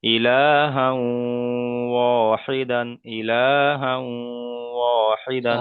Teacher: তাই তানবিনকে ওয়াওয়ের সাথে মিলিয়ে এক আলিফ পরিমাণ গুণনা করে পড়তে হবে। একে ইদগামে নাখিস বলা হয়, একে ইদগামে নাখিস বলা হয়।